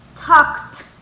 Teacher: You have to pronounce the K and also the T at the end. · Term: kt